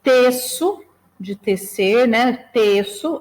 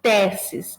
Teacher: teço, e fechado, e teces, esse e que é aberto